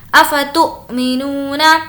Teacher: افتؤمنون، یہاں پر بھی ہمیں جھٹکا دینا ہے کیونکہ حمزہ ساکنہ کے پڑھنے میں جھٹکا ہوتا ہے